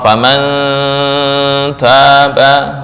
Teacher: cara membacanya ikhfa lebih besar daripada ghunah. Berarti lebih condong kedengung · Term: ikhfa akrab